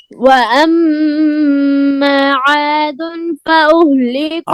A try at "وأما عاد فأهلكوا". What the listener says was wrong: عاد پہ غنہ